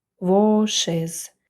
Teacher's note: a після w читається як о але вже як коротке о вошиз і на кінці для пом'якшення стає і після шиплячих приголосних